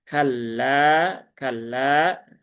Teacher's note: Dan lam sukun jangan ditahan terlalu lama.